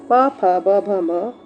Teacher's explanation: प, फ, ब, भ, म जो है वह होठों से यानी कि ओष्ठ से बोला जाता है।